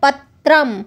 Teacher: त्र देखिए त और र की आवाज आती है